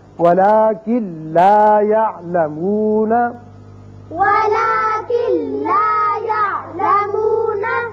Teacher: اب کن لا نہیں پڑھیں گے بلکہ کاف سیدھا لام سے ملے گا، نون کی آواز پیدا یہاں نہیں ہوگی، یعنی غنہ نہیں ہوگا